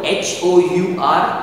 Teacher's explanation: we are not pronouncing or we are not stating or speaking the sound of the letter h it is silent we are saying our with the pronouncing the sound a and